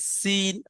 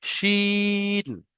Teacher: সিটির মতো দন্তের স উচ্চারণ হবে সিন, আর তারপরে যে এর উপরে 3টে নোক্তা আছে, এটাকে শিন, তালবের স্বর মতো উচ্চারণ করতে হবে, শিন।